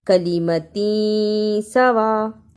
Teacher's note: تنوین کی آواز کو تھوڑی دیر ناک میں چھپانا ہے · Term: اخفا